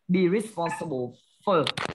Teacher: Nếu như đọc thì chúng ta sẽ đọc là be responsible for, bởi vì trọng âm không rơi vào âm for, đó là âm xóa